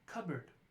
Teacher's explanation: We have cupboard, which is more of elision. That P sound is actually going away.